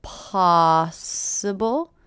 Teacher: So I notice the stress here. Possible. First syllable is stress.